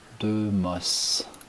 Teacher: the child here was not producing the R of morse